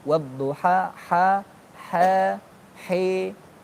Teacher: taklil itu antara fathah sama imalah